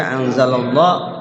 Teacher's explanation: lafzul Allah dibaca anzalallah tafkhim tebal